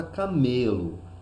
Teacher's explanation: nós vamos perceber que o me é a sílaba tônica, que recebeu maior intensidade. O K e o LO, que são pronunciados com menor intensidade, são as sílabas átonas.